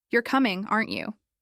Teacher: My voice goes up on, Aren't you? And that rising tone signals that I'm uncertain, maybe even a little nervous. · with a rising intonation at the end, what I'm really doing is checking. My voice goes up on, Aren't you?